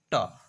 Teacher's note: હું અઘોષ અને અલ્પપ્રાણ ધવની છું